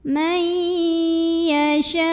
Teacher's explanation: Panjangin dulu, masuk ke hamzah ada nabarnya. Jadi agak dinaikkan intonasinya di ujung. May yasha. Ditekan ke hamzah.